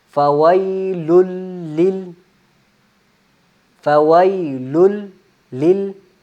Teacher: जहां पे आपकी आवाज रुक के खत्म होती है अगले लाम की आवाज भी वहीं से शुरू होगी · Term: तशदीद